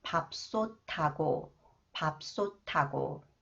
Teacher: the sound of the final consonant 티읒 is changed to 디귿, and then combined with 히읗, it is pronounced 트 sound